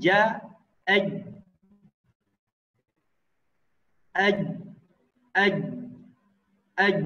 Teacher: Huruf ja ketika dalam keadaan sukun maka ya kita tidak boleh mengeluarkan nafas ya. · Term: ditahan nafasnya